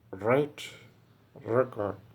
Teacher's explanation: the tip of the tongue is brought close to and touching the near part of the teeth ridge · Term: post alveolar sound